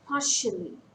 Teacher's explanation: Partially. It's a three-syllable word. Stress falls on the first syllable.